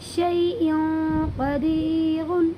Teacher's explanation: یہاں بھی دو زیر کی تنوین کے بعد حروف اخفا کے 15 حرفوں میں سے قاف آیا ہوا ہے، اسی لیے یہاں پر اخفا ہوگا، اور اس دو زیر کی تنوین کو ناک میں چھپا کر پڑھیں گے